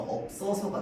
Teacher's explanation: 그래서 비읍은 앞에 있고 시옷은 뒤로 넘어가서 연음이 돼야 돼. 자, 그런데 얘는 시옷은 연음이 될 때 어떻게 되냐면요, 된 소리로 발음이 됩니다. 그래서 없어서가 돼.